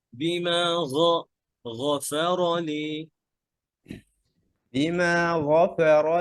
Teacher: গয়নটা ভিতরে নেন, গয়ন আর খ সেম মাখরাজ।